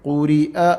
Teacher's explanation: we have a kasra on ra here, a zair, so we'll be pronouncing it light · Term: light letter